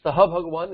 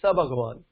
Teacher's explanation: Because when you read Saha Bhagavan, instead of that you read Sa Bhagavan. So Sa is okay to be read and thereby Visarga Lopa, Visarga can be dropped with Saha and Esha.